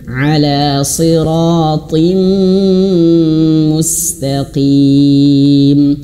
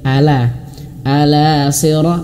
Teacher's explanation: Ala huruf ainnya diperjelas jangan hanya sekedar ala sirah, bukan huruf ainnya diperjelas di tengah tenggorokan